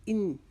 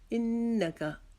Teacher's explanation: نون کے اوپر تشدید آ گئی، اس کے اوپر ہم ایک الف کی مقدار اخفا کریں گے، غنہ کریں گے۔